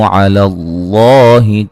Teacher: ये अलिफ मद्दा के बाद हमज़ा दूसरे कलिमा के शुरू में है, लिहाजा मद है, मद जायज़